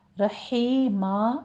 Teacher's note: رحیمہ میں را مفخم پڑھی جائیں گی دونوں جگہوں پہ اور تنوین کا قاعدہ ہے ادغام بلا غنہ، رحیمہ یہاں پہ آپ نے رحیمہ نہیں پڑھنا، رحیمن ہے، رحیمہ کہہ دیں گے، وقف ابدال کر لینا ہے، 2 کاؤنٹ کرنا ہے۔